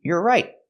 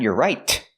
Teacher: We hear the T in right as a stop T.